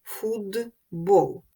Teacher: приголосний б дзвінкий він вплинув на попередній глухий т і т став вимовлятися як дзвінкий д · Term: уподібнення